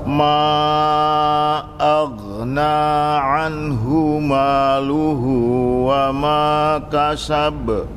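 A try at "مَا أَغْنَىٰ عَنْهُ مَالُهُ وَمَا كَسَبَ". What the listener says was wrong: Cuman huruf goin itu tadi ada catatan sedikit. Suka ini ada kelepasan pantulan di goin. Pokoknya ditekan dia nanti sampai habis. Bukan ago. Itu lebih jauh lagi kalau ago.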